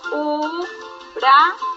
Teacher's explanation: ¿Dónde está mi mayor fuerza de voz? Es sencillo, en can. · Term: palabra aguda